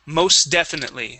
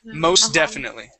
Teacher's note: we would swallow that t so there's no need to pronounce the t there